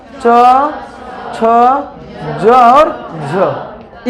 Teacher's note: क्यों बोलते हैं? इसलिए कि तालु का जिह्वा के साथ क्या होता है, स्पर्श के साथ संघर्ष करना पड़ता है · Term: संघर्षी वर्ण